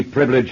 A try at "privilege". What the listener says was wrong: Stop. Privilege. 3 syllables.